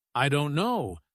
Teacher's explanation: the stress is on don't, not on I or no.